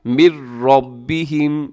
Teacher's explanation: النبیون یون من ربہم، یہاں نون ساکن کے بعد را ہے تو یہاں بھی ادغام ہو رہا ہے بغیر غننے کے۔ من ربہم، را کے اوپر حرکت ہے تو را موٹی پڑی جائے گی، اور آگے رموز اوقاف میں سے جیم ہے، اب یہاں وقف کر دیجیے گا، سانس توڑ دیجیے گا۔